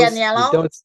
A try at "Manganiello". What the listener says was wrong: You don't say the I, and the tip is it's pronounced the same way as the actor. Manganiello, right.